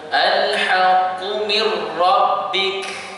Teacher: Jadi kita kena memasukkan nun ini ke dalam huruf ra secara keseluruhannya tanpa ada dengun. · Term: bila gunnah